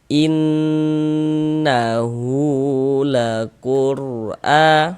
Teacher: Kita ghunahkan in kita gunahkan ya atau kita dengungkan. Jadi di bagian inn-nya itu suaranya itu kita tahan ya. Kita panjangkan sebentar ya sepanjang dua harakat. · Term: ghunah musyaddadah, gunnah musyaddadah